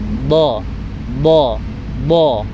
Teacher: Kanan dan kiri itu menempel sisinya. Jadi bunyinya do, dan ujung lidahnya itu ditempelkan saja ke langit-langit. · sisi-sisi dari lidah itu menempel di gigi geraham kanan dan kiri ya. Kanan dan kiri itu menempel sisinya. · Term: huruf do